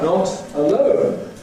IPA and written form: ˈnɒt əˈləʊn (not alone)